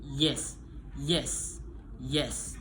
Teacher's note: bagian tengah lidah mendekati langit-langit keras manner of articulation appoxim voicing voice. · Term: voice, palatal, approximant